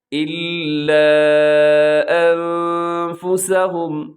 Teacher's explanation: نون میں اپنے آواز کو ناک میں لے کے جانا ہے، اس کے لیے جو ٹرم استعمال ہوتی ہے وہ ہے اخفا، یعنی آواز کو ناک میں چھپانا ہے آپ نے۔